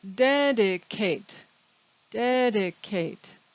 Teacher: because this is a verb the ending ate is pronounced eight